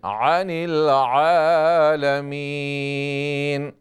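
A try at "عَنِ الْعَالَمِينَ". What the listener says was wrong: حمزہ کی آواز آ رہی ہے. عین پہ تھوڑی محنت کریں. عن العالمین.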